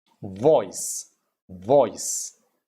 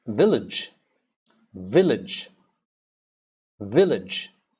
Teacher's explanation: score then you have vibration vibration there's a vibration happening slight there's a vibration between my tooth and my and my lips